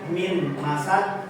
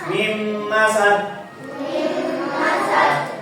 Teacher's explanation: Maka ketika ada nun sukun bertemu dengan huruf minim misalnya, maka huruf nun sukun ini ya huruf nun sukun ini di dimasukkan masukkan ke dalam huruf mim. Sehingga bacanya bukan minim masad tapi mim masad ya.